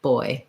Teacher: the b sound stops and it's made with lips only